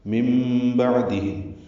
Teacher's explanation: من بعدہم میں نون ساکن کے بعد با آنے کی وجہ سے اقلاب ہوا ہے، نون کی جگہ میم پڑھیں گے. من بعدہم، عین ساکن پہ اظہار ہے، ہم میں میم ساکن پہ بھی اظہار ہے اور یہ ظاہر شفوی ہے